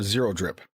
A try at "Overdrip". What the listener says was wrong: It is Overdrip. The zero is pronounced like an O, just for the record.